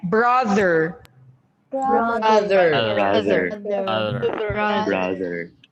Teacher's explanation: we have words with voiced TH sound in the middle